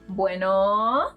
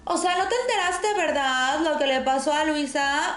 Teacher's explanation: This accent consists in elongating the vowels. So, if you call someone and they respond bueno, they're probably fresa. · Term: acento fresa